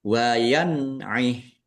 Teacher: Nun sukun bertemu dengan huruf ain. Bacaan izhar dibaca jelas. Hnya dibaca sukun karena wakaf dan dibaca pendek wakafnya karena tidak ada tanda panjangnya.